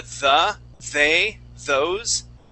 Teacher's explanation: how we pronounce that okay so for example that th we're we're going to stick our tongue okay that's our tongue right between our top and bottom teeth okay we don't stick it all the way out like this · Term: voiced th sounds